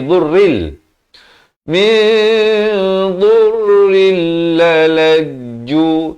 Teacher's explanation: Jangan panjang. Tanwin bertemu lam asalnya dhurrin. Datang lam jadi dhurril.